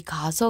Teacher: 동음 같은 경우는 둘 다 발음하지 않고 어 하나를 탈락시켜 준다라고 봐야 된다는 거죠 그래서 발음이 지금 뭐와 같아진 거예요요 표기와 같아진게 바로이 모음 탈락이다